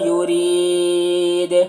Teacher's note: یرید یہاں پر را کو باریک پڑھیں گے، اور یا مدہ ہے، یہاں پر وقف کریں گے تو دال کا زبر، دال کا پیش جو سکون سے بدل جائے گا تو پھر دال میں قلقلہ ہوگا، اور مد عارض وقفی بھی ہوگا۔